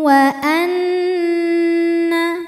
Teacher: waruhban wa Anna nunnya dihukumi dengan gunah musyaddadah karena Nun bertasydid cara membacanya adalah berdengung bunyi n tahan sampai ada suara masuk hidung kurang lebih dua harakat